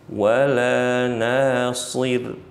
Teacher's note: pastikan nanya panjang bukan shadnya yang dipanjangkan